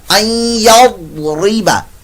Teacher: این یضربا این نون ساکن کے بعد یا آیا تو یہاں پر ادغام مع الغنہ کا قاعدہ. ضاد حروف مستعلیہ میں سے اس کو پر موٹا پڑھیے گا